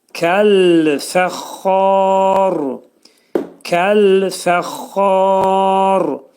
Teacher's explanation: Burada xa dörd səs qədər uzanacaq, çünki mədd ariz olacaq. Ra hərfi altındakı kəsrə atılacaq.